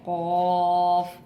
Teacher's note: ज़बान की जड़ से और ऊपर के तालू से कौफ अदा होगा, तालू को थोड़ा ऊपर करके पढ़ना है